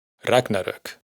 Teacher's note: se pronuncia con el acento en la primera sílaba